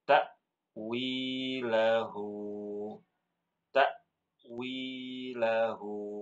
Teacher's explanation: Fokus di hamzah sukunnya, Ibu tahan sedikit, sedikit aja, jangan buru-buru.